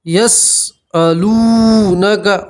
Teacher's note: واو مدہ کسے کہتے ہیں کہ واو کے اوپر جزم ہو اور اس سے پہلے والے حرف کے اوپر پیش ہو تو اسے واو مدہ کہتے ہیں، ٹھیک ہے۔ واو مدہ میں آپ کو ایک الف کے برابر کھینچ کر پڑھنا ہے۔